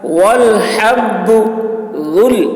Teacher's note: ذال کی آواز باریک ہوگی